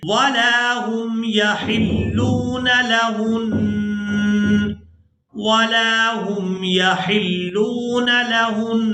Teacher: ہا کو نون مشدد کے ساتھ ملاتے ہوئے غنہ ضرور کریں گے